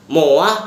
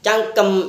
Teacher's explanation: M merupakan kontoid nasal bilabial dan bersuara.